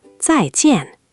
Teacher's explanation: Both syllables are tone four, both falling, two firm drops in a row.